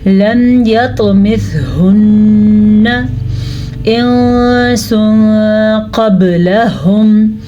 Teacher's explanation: نون پہ ہے شد تو نون پہ ہوگا غنہ